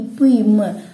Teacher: அது நமக்கே தெரியுது மேலிதலும் கீழதலும் பொருந்துவதால் இப்பு ம் ஓகேங்களா அது ரெண்டும் வாயை நம்ம மேலிதலும் கீழ இதழும் ரெண்டும் டச் பண்றதுனால உருவாகும்